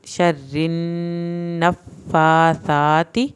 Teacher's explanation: नून की शद पे एक अलिफ के बराबर देर लगेगी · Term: गुन्ना